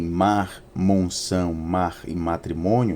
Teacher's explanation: nós temos aqui uma bilabial nasal